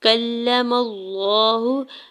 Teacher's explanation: میم کے زبر کو لام جلالہ کے ساتھ ملاتے ہوئے پڑھنا ہے. یہاں پہ اللہ کے نام کو پر پڑھیں گے کیونکہ اس سے پہلے زبر ہے. ہا کی پیش کو بغیر کھینچے ہوئے ادا کرنا ہے.